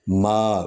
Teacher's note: میم جو ہے یہ شفوی حرف ہے، یعنی ہونٹوں سے ادا ہوتا ہے۔ ما، دونوں جب میم ہم بولتے ہیں تو دونوں حرف جو ہے وہ دونوں ہونٹ جو ہے وہ مل جاتے ہیں۔